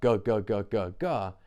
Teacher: And what also makes it that point value vibrationally compared to any other closures is that ga is a closure in the back of the throat, which is where the sound begins in the first place. So it's the most pure and complete point value that there can be.